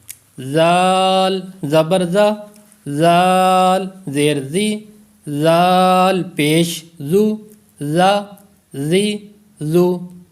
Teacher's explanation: سیٹی کی آواز پیدا نہیں ہو رہی، سختی بھی نہیں ہو رہی